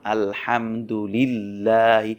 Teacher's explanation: এখানে একটি আল্লাহ শব্দ রয়েছে, তবে এই আল্লাহ শব্দটির ডানে রয়েছে জের, সেজন্য আমরা সেই আল্লাহ শব্দের লামটি বারিক অর্থাৎ চিকন করে পড়ব